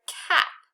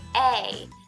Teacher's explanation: the A is not going to say ah anymore. It's going to say its name. It's going to say A.